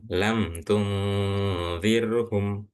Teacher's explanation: Mim dan ba maka dibacanya jelas enggak pakai dengung.